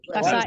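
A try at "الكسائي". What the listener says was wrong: ki, jangan ka. Wal kisai.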